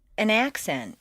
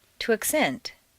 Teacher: change the stress from the first syllable for nouns to the second syllable for verbs. This is a regular, consistent change.